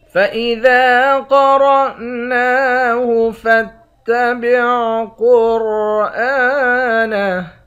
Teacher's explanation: ذال کے بعد الف ہے، الف حروف مدہ ہے، ایک الف کی مقدار کھینچ کر پڑھیں گے · قاف اور را ان دونوں حرف کو موٹا پڑھیں گے، نون کے اوپر کھڑا زبر ہے، کھڑے زبر کو ایک الف کی مقدار کھینچ کر پڑھتے ہیں